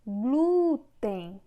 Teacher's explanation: Na palavra glúten, o glu é que tem uma força maior. Nesse caso, é paroxítona. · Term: sílaba tônica